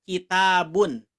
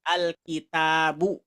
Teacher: ketika ada alif lam maka tanwinnya hilang diganti dengan Dom biasa